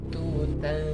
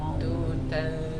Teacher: lidah belakangnya enggak naik ke atas ya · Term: tipis